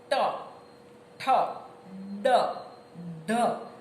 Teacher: ટ ઠ ડ અને ઢ એ મૂર્ધન્ય વ્યંજન છે. મૂર્ધા મૂર્ધા એટલે તાળવાનો સૌથી ઉપરનો ભાગ.